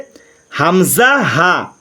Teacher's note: এক নম্বর মাখরাজ হলকের শুরু হইতে হামজা হা